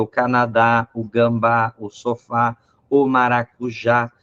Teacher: quando elas têm o acento agudo no final né que ela fica forte a pronúncia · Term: a parte mais forte